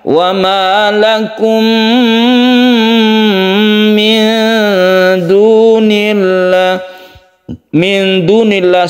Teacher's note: Wa ma lakum min dunillah, sukun nun bertemu dengan dal, ini ikhfa seperti penjelasan tadi. Ketika kita membaca nun, kita bersiap-siap atau memberi ancang-ancang untuk membaca huruf dal, ini namanya ikhfa.